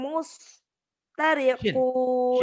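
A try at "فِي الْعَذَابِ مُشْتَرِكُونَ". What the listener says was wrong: Shinnya kurang keluar. Mush. Ayo keluarin.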